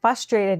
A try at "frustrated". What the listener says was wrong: Frustrated. You always forget the R.